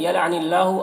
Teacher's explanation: اللہ کے لام کو باریک پڑھنا ہے